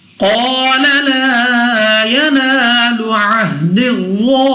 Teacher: قاف مستعلی میں سے موٹا پڑھیں گے